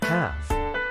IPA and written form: hɑːf (half)